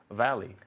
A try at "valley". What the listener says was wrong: Valley. Y mira, no me dice valley. Valley. La V y la B en inglés son muy distintas. Valley. Mira, los dientes de arriba aquí.